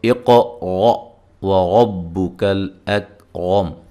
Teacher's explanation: واو کو جب ادا کرنا ہے ہونٹوں کو گول کرتے ہوئے، را کو موٹا، کاف کو باریک، لام کو ہلانا نہیں ہے